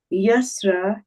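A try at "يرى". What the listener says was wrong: Yara. So the beginning word you said yasra, there is no sin there, it is just yara, right?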